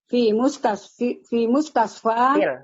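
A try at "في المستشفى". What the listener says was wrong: Fil ada islamnya. Fil mustasfa.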